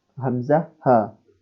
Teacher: huruf hamzah dan ha merupakan huruf yang keluar dari aqsal halqi. Aqsal halqi itu artinya di pangkal tenggorokan ya.